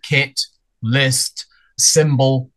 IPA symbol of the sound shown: ɪ